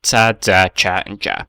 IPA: ts, dz, tʃ og dʒ